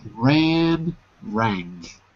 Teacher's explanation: notice how the sound is a little different when you put that ng it's not such a pure vowel sound anymore